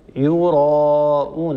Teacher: الراء هنا مفخمه لانها مفتوحه فلا ينصح ان نقول يرائنا لابد من تفخيم الالف الالف تتبع ما قبلها تفخيما وترقيقا ولا توصف الالف بتفخيم ولا